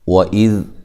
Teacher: واو کو ادا کرتے ہوئے ہونٹوں کو گول کرنا ہے، حمزہ کو تحقیق سے ادا کرنا ہے، ذال کو نرم ادا کرنا ہے اور ذال کو ہلانا نہیں ہے۔